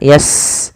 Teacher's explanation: Sin punya sifat namanya Hames alirkan nafasnya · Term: hamas